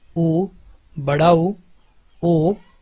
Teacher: ऐसे स्वर जिनके उच्चारण में जो होठ का आकार है वो गोल हो जाए, उनको हम वृत्ताकार स्वर कहते हैं।